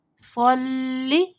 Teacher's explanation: صاد کو موٹا پڑھنا ہے، لام کو باریک پڑھنا ہے